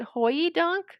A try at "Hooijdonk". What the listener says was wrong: I don't think you pronounce that much of a Y in there, but it's HOE YDONCK. But Hoi Dunk, I don't think is how you say it, but maybe like Hoi Dunk or something like that.